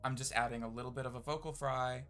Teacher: I'm just adding a little bit of a vocal fry and talking at slightly pitched up to my natural tone.